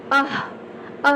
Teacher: विसर्ग का उच्चारण होता है कंठ से